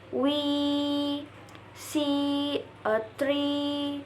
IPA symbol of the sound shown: iː